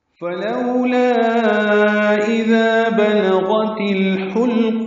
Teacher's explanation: لا مد منفصل الف مدہ کے بعد اذا کا حمزہ آ رہا ہے، اس لیے لام کو 4 حرکات لمبا کرنا ہے۔ اذا میں ذال نرمی سے ادا ہوگا، ذال الف مدہ ہے، 2 حرکات لمبا کرنا ہے۔